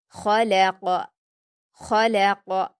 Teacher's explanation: یہاں پر آپ دھیان دیں گے آواز میں کہ ہم خواہ اور قاف کو پر پڑھ رہے ہیں لیکن لام پر ہمارے ہونٹ پھیل جا رہے ہیں اور ہماری آواز باریک آ رہی ہے